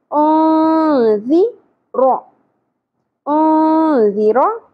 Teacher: ذال نرمی سے, سیٹی کی آواز نہیں آنی چاہیے